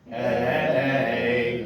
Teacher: the accent is actually on the second to last syllable, which happens to be the first syllable